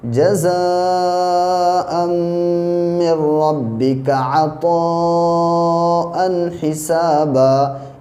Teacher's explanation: مد متصل ہے اور اس کو 3 الف کے برابر کھینچ کے پڑھیں گے